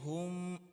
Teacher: جو 2 آنکھوں والا ہا ہے، اس کو ہم نے سینے سے نکالنا ہوتا ہے